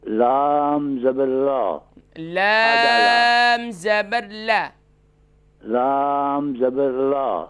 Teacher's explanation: لام کو 5 الف کی مقدار کھینچے نا